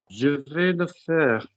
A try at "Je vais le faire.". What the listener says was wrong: That's not remotely sad. That just sounds snide, sort of admin worker. Sounds sad. Je vais le faire.